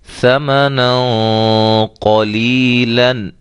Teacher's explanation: موٹا، غنہ موٹا کریں گے۔ یہاں قاف موٹے حروف میں سے ہے، لہذا یہاں ہم تنوین کے بعد موٹا غنہ کریں گے